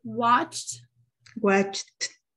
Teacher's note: It's a t because there's no vibration so you memorize the verbs that you see you memorize the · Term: t sound